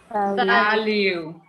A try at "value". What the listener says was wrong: Yes, for this, don't put your lips together. We have a V.